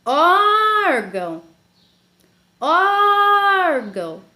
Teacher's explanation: A sílaba or é a sílaba tônica.